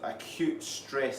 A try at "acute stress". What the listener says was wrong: acute stress, not cute stress.